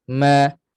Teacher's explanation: Pada mim ni anqas, gunnah martabat dengung yang ke-14 kali. Maksudnya mim berbaris ataupun nun berbaris tidak dapat tidak, dia mesti lalu juga di hidung. Memang tempat keluarnya di hidung.